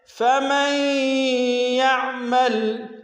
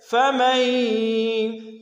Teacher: یا کی مثال میں ہم غنہ بھی کر رہے ہیں اور ادغام بھی کر رہے ہیں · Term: ادغام مع الغنہ